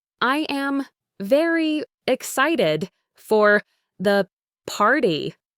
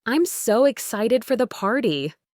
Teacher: With a rising and falling tone on so and excited